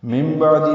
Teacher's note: من بعدی میں نون ساکن کے بعد با یہ جس کی وجہ سے اوپر چھوٹی میم لکھ دی گئی ہے، یہ اقلاب یا ابدال ہو رہا ہے، تو من کی جگہ مم پڑھیں گے